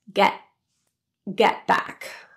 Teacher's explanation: The T in get is pronounced as a glottal T. It's held in the glottis and released on the next sound, back.